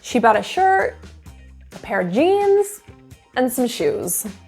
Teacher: so we'll work on that downward intonation at the end that's your main focus